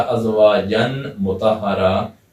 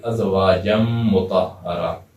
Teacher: جو نون کی آواز آ رہی تھی اسے نہیں نکالیں گے بلکہ جیم کو میم سے ملا کر پڑھیں گے، ازواجم مطہرہ۔ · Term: ادغام